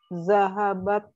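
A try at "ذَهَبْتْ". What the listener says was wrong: aywa zahabat ya ini kalau ada fathah ini harusnya sukun ya zahabat oke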